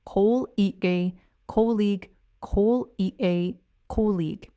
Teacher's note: The correct pronunciation is col-eg. The stress is on the first syllable, col, and the ending is just a soft, clean e-ig sound.